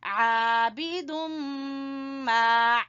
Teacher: ادغام ہو رہا ہے، یہاں پہ غنہ کریں گے